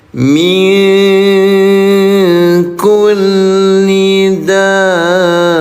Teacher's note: Namanya mad lazim. Panjangkan cara bacanya enam harakat.